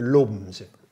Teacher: Wat ze in het oosten doen is natuurlijk de eind e, we lopen, die slikken ze in. En de n spreken ze uit.